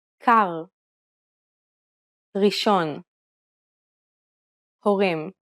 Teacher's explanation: Unlike the English R, which is pronounced with the tip of the tongue at the front of the mouth, the Hebrew R is pronounced using the back of the tongue with a slight roll. You can think of it like gargling air at the back of your throat. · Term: Hebrew letter resh